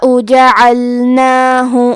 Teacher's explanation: عین کی ادائیگی حلق کے درمیان والے حصے سے ہے